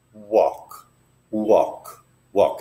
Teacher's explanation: the L is hardly there it's kind of you lift the back of your tongue to the roof of your mouth · And then the L is hardly there.